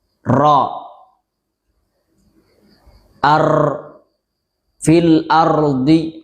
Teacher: menggetarkan takrir lebih dari dua kali. Ro ar fil ardi misalnya terlalu berlebihan.